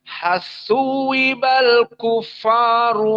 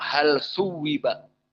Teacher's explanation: dari usul qiraah alqisai idgham lam kepada sa